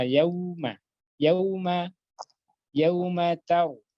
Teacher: Ta bertemu ro, berarti harus ditebalkan ro-nya taru.